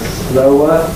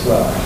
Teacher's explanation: You've got O plus er. I was neglecting to make the second part of the diphthong before a weak vowel. So instead of slower, I was saying slur.